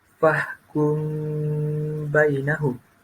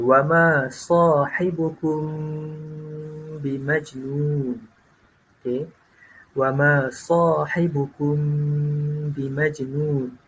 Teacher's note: Maknanya huruf yang mengandungi mim mati, mim sakinah yang bertemu dengan huruf ba itu dibaca dengung dengan 2 harakat. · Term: ikhfa syafawi